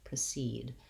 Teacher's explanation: In precede, because it has second syllable stress, the clear vowel E, like the word seed, is in the second syllable. And this syllable is longer, has the clear vowel, and then the E in the first syllable says the relaxed vowel I, precede. · the E in the first syllable says the relaxed vowel I, precede. You can probably use a little bit of a schwa there, but I would say in this case, because there's a similar word with a schwa, you want to try to aim for having that I sound, precede.